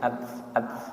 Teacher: namanya hames atau angin, keluar angin sedikit